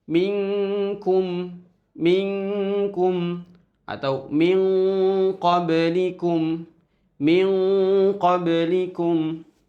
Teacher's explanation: Karena huruf qof dan kaf itu berada di makhraj paling ujung, maka disebut dengan ikhfa ab'ad.